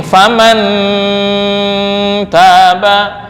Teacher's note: Cara membacanya samar lebih besar daripada dengung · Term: ikhfa akrab